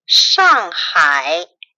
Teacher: They're fourth, falling, and third, fall and rise.